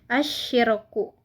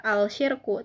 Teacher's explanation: Karena huruf alif lam bertemu huruf syamsiyah yaitu shin. Dibaca idgham atau masuk ke shin